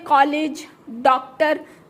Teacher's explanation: इसमें आ और ओ दोनों ध्वनि का मिक्स साउंड आता है, इसीलिए इसको आ में मिलाया गया है।